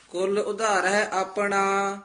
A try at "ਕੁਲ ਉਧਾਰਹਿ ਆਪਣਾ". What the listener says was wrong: ਕੁਲ ਨਹੀ ਕਹਿਣਾ ਕੁਲ ਪੋਲਾ ਹੀ ਬੋਲਣਾ